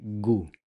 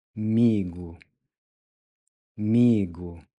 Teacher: the O is pronounced like a U, giving you gu. Adding in the MI, we get migu.